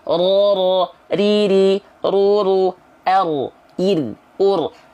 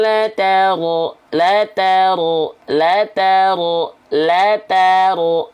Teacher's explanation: Dia sedikit getarannya karena sifatnya takrir. Walaupun sedikit tapi tetap tegas, lugas, dan jelas getarannya mana.